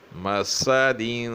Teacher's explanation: مسادین، مسادین، میم کی ادائیگی صحیح ہونی چاہیے، یعنی واضح ہونی چاہیے۔ سین کی ادائیگی سخت اور پتلی ہوگی، اور اس طرح ادا کرنا ہوگا کہ جس طرح تھوڑی سی سیٹی کی آواز نکلے۔